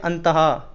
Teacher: तो दोस्तों, हा की तरह उच्चारण होता है विसर्ग का। संस्कृत में हा की तरह विसर्ग का उच्चारण होता है। जैसे लिखा होता है दोस्तों अंत, उसमें विसर्ग लगी होती है बिंदी, तो उसे पढ़ते हैं अंतहा।